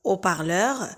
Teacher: Haut-parleur, c'est une liaison aussi interdite.